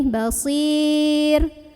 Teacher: Ro-nya ini dibunyikan secara tarqiq kalau berhenti. · Maka dibaca panjang si-nya boleh 2, boleh 4, boleh 6 harokat asal konsisten dalam sekali membaca. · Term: mad arid li sukun